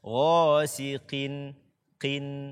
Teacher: dia tidak sempurna derajat ketebalannya karena dia berbaris kasroh. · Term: qaf kasrah